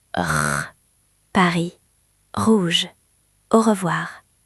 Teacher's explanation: Comme quand on se gargarise. R, C'est dans la gorge, pas sur la langue.